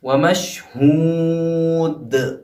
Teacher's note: آخر کا جو دال ہے، کیونکہ لفظ کے آخر میں آیا ہے دال، اس لیے یہاں پہ جو ٹکراؤ ہوگا یعنی جو جنبش ہوگی وہ زیادہ ہوگی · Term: قلقلہ کبریٰ